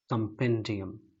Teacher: कॉम नहीं बोलना है, कम बोलना है, क्योंकि यहाँ पर स्वा का इस्तेमाल हुआ है। इस उल्टी ई को आप स्वा कहते हैं, SCHWA, इसका नाम श्वा है, और इसका साउंड क्या है, अ है, क्योंकि आप अ को हिंदी में समझते हैं, आवाज़ को, इसीलिए मैं हिंदी में लिख कर दिखा रहा हूँ, ठीक है, देवनागरी लिपि में।